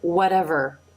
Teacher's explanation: the corners of the lips come in a little bit, causing the lips to round somewhat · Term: R sound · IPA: ɹ